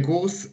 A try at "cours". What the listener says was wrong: Pas les courses. les cours, c'est le S est silencieux. Donc, on dit le cours, voilà. Donc, le cours, mais le S est silencieux comme la plupart des mots en français okay. qui ont un S à la fin, c'est d'habitude toujours silencieux. Sauf quand c'est le féminin qui a un E après, comme une course.